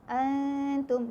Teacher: Ikhfa hakiki sebab bila nun sakinah jumpa dengan ta, ini tak tik tu kan, nun sakinah berjumpa dengan ta, ikhfa hakiki, dengung dua harakat